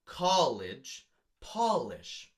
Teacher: they are an imperfect rhyme because they both have the ah sound and then the I sound at the end